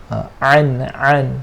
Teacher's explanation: Ma aghna anhuma tekankan sikit huruf ain. Huruf ain makhrajnya di mana? Di tengah ke kerongkong. Dia kongsi makhraj huruf, dia kongsi tempat dengan huruf ha.